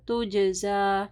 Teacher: جیم کے اوپر قلقلہ ہوگا اور کھڑی زبر بھی پڑھنی ہے